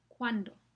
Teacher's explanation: esa u en cuándo es una semivocal y está antes de la a, la vocal normal